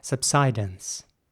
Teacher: in American English, it would be more like subsidence, with an I sound this time for the American version